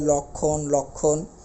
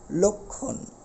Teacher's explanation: ল এর সাথে একটি অ আছে তারপরে যুক্তবর্ণ যুক্ত খ রয়েছে তাহলে এই ল টা হয়ে যাবে একটা ও ওকার ব্যবহার করতে হবে অর্থাৎ লক্ষণ অর্থাৎ লর ওটা অটা ওর